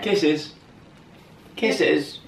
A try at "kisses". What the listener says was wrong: You have to say it a bit more high-pitched.